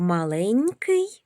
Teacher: В слові маленький звук Нь вимовляємо м'яко.